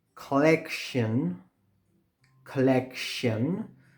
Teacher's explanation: the first C is pronounced with this sound, k, and the second C is pronounced with a sh sound